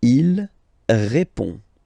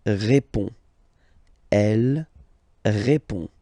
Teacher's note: So, final D is not pronounced. You only have this on nasal sound at the end.